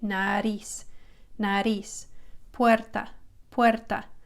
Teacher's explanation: So it's just tapping the top of the roof of your mouth. It's not a hard R like in English. So R is not like English. It taps the top of your mouth really lightly.